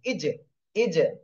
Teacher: জিমটা কলকলা এই জন্য ধাক্কা দিচ্ছি, ইজ, ইজ। হামজাহ জিম জের ইজ, এটা আপনাদের বলতে হবে, হামজাহ জিম জের ইজ।